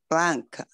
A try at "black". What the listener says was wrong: Black. ▁因 为 刚 才 你 讲 的 只 有 一 个 ▁N ▁音 ， 你 在 念 ▁blank ▁就 是 白 ， 空 白 的 。 假 如 说 你 放 一 个 ▁N ▁呢 ， 就 是 空 白 的 意 思 。